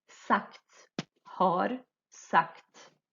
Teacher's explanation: O G perto do T vai ficar com o som quase de K.